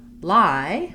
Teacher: rounded vowel sound then when we go to lie we have the i diphthong where it's not rounded and i'm open and back it's in the start and then